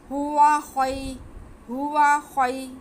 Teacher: आगे ख्वा पे ज़बर है और या साकिन है, तो ये या लीन हो गया, इसे भी बिल्कुल नहीं खींचना